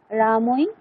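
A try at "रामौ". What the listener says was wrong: রামই রামই নয় রামৌ ঔ ঔ আর ঐ এর মধ্যে পার্থক্য আছে।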